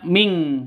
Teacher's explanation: nun mati bertemu dengan qof cara bacanya samar didengungkan siap-siap ke huruf qofnya nonun matinya ditambah dengan n ng jadi bacanya Ming bukan Min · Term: Ikhfa Hakiki